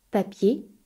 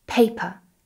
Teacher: the P in English is a little bit stronger. There's a bit more air that comes out of your mouth. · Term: English P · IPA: /p/